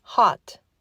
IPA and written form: hɑt (HOT)